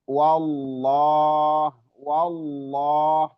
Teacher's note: tafkhim tebal dan di panjangkan dua harakat dua harakat